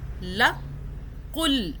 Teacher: لام کی 2 مرتبہ آواز بنائیں گے، تشدید ہے اوپر